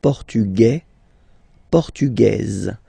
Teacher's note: it will be only in this z sound the difference between the masculine form and the feminine form